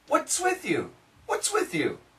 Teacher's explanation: if you say it a little slower, there is a T.